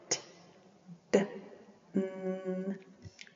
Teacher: Alveolar, which is the tongue to the ridge behind the teeth